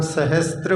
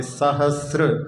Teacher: इसमें उच्चारण में कई बार लोग सहस्त्र बोल देते हैं, ता नहीं है, वहाँ पे सहस्र।